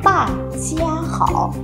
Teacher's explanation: Sẽ có một số bạn đọc thành ta chia khó, nhưng đây là cách đọc chưa chính xác nhé. Các bạn cần phải bảo toàn được âm y ở trong từ chia.